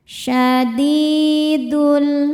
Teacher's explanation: Sebab ada ya sukun sebelumnya kasrah. Cara bacanya dal dipanjangkan dua harakat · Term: mad thobi'i zohiri